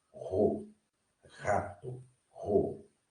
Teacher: Observe que também é uma letra gutural. Você vai vibrar as cordas vocais, né, para poder pronunciá-la.